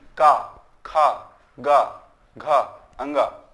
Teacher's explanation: का वर्ग जो है वो कंठ से बोला जाता है।